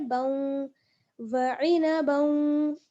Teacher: बा को आगे वाव के साथ मिलाएंगे, यहाँ पर क्या होगा, इदगाम हो जाएगा, क्योंकि बा पर तनवीन है